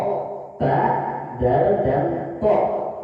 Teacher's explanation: ujung lidah bertemu dengan dinding gigi seri atas, hurufnya ada 3, yaitu ta, dal, dan to